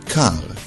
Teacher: most Israelis pronounce it with a guttural r sound similar to the French but some make the trilled r sound as in Spanish and